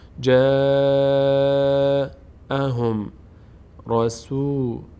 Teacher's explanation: جیم فتحه بعدش الف صدای آ می‌گیره آ مد کشیده بشه چون جیم از اون حج حرف نیست باریک خوانده میشه جاهم